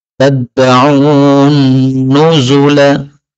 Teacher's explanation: Nah, ini nun ketemu nun boleh idgham.